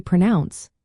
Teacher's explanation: When we say pronounce, the emphasis is on the second syllable.